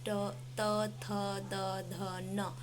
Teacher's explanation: Touch हो रही है हमारी जीभ, ये दंत वाले हो गए। · अब आता है दंत व्यंजन, जो दांत से स्पर्श होते हुए निकलते हैं।